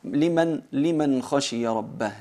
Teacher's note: Hay que pronunciar la nun as-sakina con aclaración, sin más gunna de lo natural, y en el caso de liman khashiya rabbah lo mismo, es kha con nun as-sakina, es idhar, y eso es lo que hemos estudiado hasta el momento.